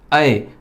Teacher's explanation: ऐ में आ और ई मिलके बना है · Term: संयुक्त स्वर